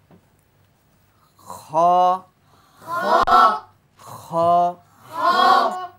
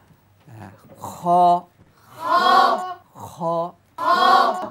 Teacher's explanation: কণ্ঠনালীর শেষ ভাগ থেকে কণ্ঠনালী শেষ থেকে উচ্চারিত হবে বাতাস বের হবে হামসে সিফাত আছে